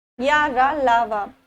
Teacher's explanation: तालु से। रा का उच्चारण स्थान मूर्धा से होता है, मूर्धा। ला का दंत, और जो वा का उच्चारण स्थान है वो है दंतोष्ठ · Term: अंतस्थ व्यंजन